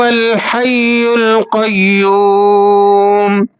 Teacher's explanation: یا پر تشدید ہونے کی وجہ سے اسے سختی کے ساتھ ادا کرنا ہے۔ اسی طرح لفظ القیوم کے اندر جو یا ہے اسے بھی آپ نے سختی سے ادا کرنا ہے، اور اس کے بعد واو جو ہے اسے کسی قدر کھینچنا بھی ہے۔